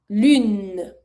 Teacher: I'm putting my lips rounded, but I'm putting my tongue a little bit down, meaning I'm pitching a little bit my lips.